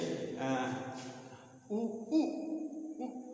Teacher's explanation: तो ये जीभ क्या करती है, रेज करती है, बैक वाला पोर्शन वो रेज करता है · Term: बैक वॉवेल